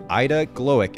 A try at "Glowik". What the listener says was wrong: It's actually Glowik, and it's because it's okay. A German name. We turned that W to a V.